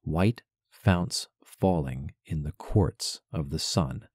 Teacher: Strong, strong, strong, weak, weak, weak, strong, weak, weak, strong. If we attach the ing of falling onto the end of fall as a sort of half-syllable afterthought, then we have three groups of three syllables here. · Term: stressed syllables